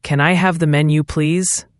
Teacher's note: Again, Z sound at the end of please.